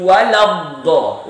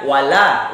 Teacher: lam itu berokat fathah, setelahnya ada tasdid huruf do dibaca jelas lamnya, baru masuk ke huruf do ditekan karena ada tasdid